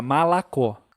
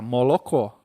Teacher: Aí vira A mesmo, aí vira malacó. Quando é no sul, fica molocó.